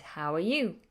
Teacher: we ask a question we don't have this intonation normally but with questions it's a rising intonation at the end